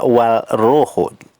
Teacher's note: adalam kemudian roh Ada Wow ada Alif dan lam ini termasuk alif lam syamsiah jadi bunyi huruf lam nya hilang